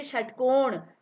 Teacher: षटकोण में श बोलने में हमारी जिह्वा जो है वो मुड़ रही है, तो इसलिए इसे क्या बोलते हैं, मूर्धन्य श बोलते हैं।